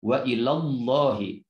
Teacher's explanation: pada kata wa ilallahi ini harus tafkhim atau tebal karena lafaz Allah didahului dengan harokat fathah